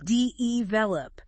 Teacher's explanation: You might hear de-velop with a stress on the first syllable. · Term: syllable stress